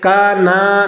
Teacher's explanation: नून को नहीं खींचेंगे, नून के ऊपर ज़बर है, हरकत नहीं खींची जाती, ज़बर ज़ेर पेश हरकत है, इन्हें बिल्कुल नहीं खींचते हैं।